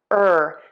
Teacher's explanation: The tip of your tongue is either down or flipped back. Back of the tongue is pulled high up and your lips are square and tense.